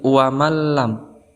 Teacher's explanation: artinya memasukkan bilagunnah artinya dengan tanpa dengung maka cara membacanya yaitu memasukkan tanwin ataupun Nun kepada huruf idgham dengan tanpa dengung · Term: idgham bilagunnah